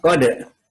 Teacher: dalnya itu qalqalah sughra, qalqalah kecil, dibalikin. Beda dengan kalau di akhir kalimat.